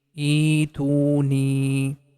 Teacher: The E sound, we are going to make it for 2 count because of letter ya.